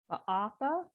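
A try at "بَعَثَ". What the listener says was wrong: The same vowel. It's not a double vowel. You don't have to say ba'atha, just ba'atha. Ba'atha, the same ba'atha, which meant I think I told you sent in the past, ba'atha.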